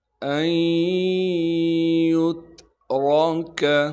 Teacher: ایحسب الانسان ان یترک، حمزہ کو یا سے ملائیں گے ادغام کے قاعدے سے، اس نون ساکن کو یا میں مدغم کر دیں گے یعنی چھپا دیں گے۔ نون ساکن کے بعد یا حروف یرملون میں سے آ گئی، لہٰذا ادغام کے قاعدے سے اس نون کو یا میں چھپانا ہے۔